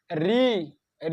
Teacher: ऋ ऋ मतलब मूर्धा। ऋ बोल रहे हैं। तो देखिए हमारा मूर्धा में टच कर रहा है।